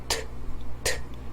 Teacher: 다만 위치가 여기 잇몸이죠. 잇몸에 차단이 되고 그 다음에 압축이 되고 그 다음에 터집니다. 그래서 트 이런 식으로 소리가 나죠. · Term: T